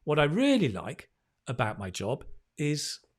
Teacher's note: What I really like, and you stress the really, right? What I really like about my job is, okay, so stress and pause.